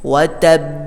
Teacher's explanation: Itu ditahan dulu. Nah, karena ba itu punya sifat qalqalah, baru terakhirnya pantulkan.